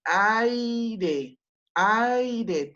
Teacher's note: ay queda en la misma sílaba, por lo tanto, tenemos ahí una vocal abierta con una vocal cerrada y se produce el diptongo